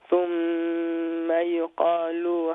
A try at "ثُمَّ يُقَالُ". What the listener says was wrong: Yeah, don't make the lam long.